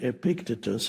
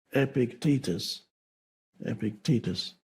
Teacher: I used to say Epictetus, and then I realized that the stress is on the second syllable